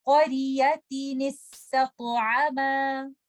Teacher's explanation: We will give the noon that is hidden in tanween a kasra and we will join it with letter sin, and then ta is light and ta is heavy, and we have to recite this ta with the qalqala · We know this rule: when tanween is followed by hamzatul wasl, this is meeting of two sakin letters or ittaqa is sakinain. We will give the noon that is hidden in tanween a kasra and we will join it with letter sin